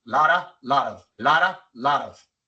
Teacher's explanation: Es el mismo sonido. La lengua se pone en la misma posición y sale el mismo sonido. Es una R y no es una D. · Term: flap T